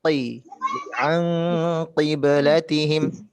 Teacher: Sedangkan huruf qaf dia punya sifat isti'la. Jadi harus tetap tebal.